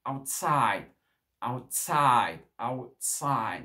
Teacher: Le out ici, c'est une préposition, donc on ne va pas trop donner d'importance, et c'est side, outside. Donc l'accent tonique va être où? Sur la deuxième syllabe.